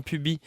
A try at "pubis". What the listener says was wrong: On prononce pas le S.